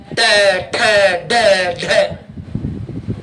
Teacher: तय बोलकर देखो, दांत के पीछे वाला भाग और जीभ के आगे वाला भाग चिपकाना पड़ता है बार बार, त थ द ध है। ट वाली पूरी लाइन बोलकर देखो, जीभ को मोड़कर धक्का देना पड़ता है